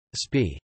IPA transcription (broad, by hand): sɑp